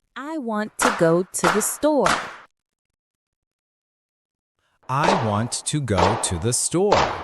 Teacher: In our sentence, the stressed content words are want, go, store. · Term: English rhythm